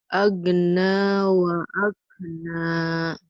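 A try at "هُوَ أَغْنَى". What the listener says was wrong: Huwa aghna masih keras ya. Nanti dilatih.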